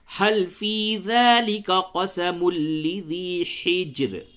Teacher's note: کیونکہ را کے نیچے زیر ہے، اس وجہ سے حجرن باریک پڑھی جائے گی، اور اگر وقف کرتے ہیں تو را ساکن ہے، ما قبل ساکن، اور پھر ما قبل پہ بھی زیر ہے، اس وجہ سے دونوں صورتوں میں اس حجر کی را کو باریک پڑھیں گے